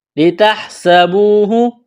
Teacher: سین میں سیٹی کی آواز پیدا کریں گے، سین کو باریک کرنا ہے، واو مدہ ہے، ایک الف کے برابر کھینچنا ہے۔